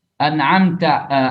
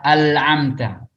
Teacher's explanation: Jadi bukan an'amta, tapi dia baca al-amta. Nun berubah jadi lam. Ini namanya taghyirul harf.